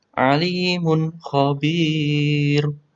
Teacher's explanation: Ada tanwin bertemu kha, harus dibaca jelas, bacaan idghar halqi.